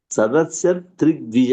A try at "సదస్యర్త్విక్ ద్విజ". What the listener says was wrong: ఒక అక్షరం పోయింది మీరు చదవటంలో. సదస్యర్తి టీ తర్వాత వకారం ఉంది కదండి, వకారం కూడా పలకాలి. సదస్యర్త్విర్ ద్విజశ్రేష్ఠ. దాన్ని ఋత్విక్ ద్విజశ్రేష్ఠ. ఎందుకంటే ఈ గాలో ఈ తర్వాత ఉన్నటువంటి ఈ అక్షరంలో గ అనేటువంటిది ముందుకెళ్తుంది. ఋత్విక్.